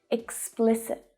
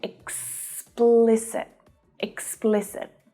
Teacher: So the stress there is on the second syllable, but all of the vowel sounds are short.